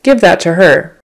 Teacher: just the H is barely there just enough